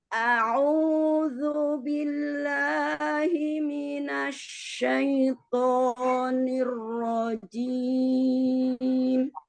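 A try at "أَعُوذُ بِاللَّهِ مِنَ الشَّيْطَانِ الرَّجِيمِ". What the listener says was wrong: Coba ketika dhammah jangan tinggi suaranya. A'udzu. Jadi jangan a'udzu billahi minasyaitonir rajim.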